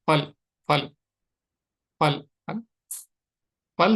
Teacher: ये होठ दांत को टच कर रहे हैं। फल फल फल फल फल सही नहीं है।